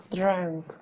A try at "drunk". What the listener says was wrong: Me sonó mucho a E, como que me sonó como drunk. No, es drunk.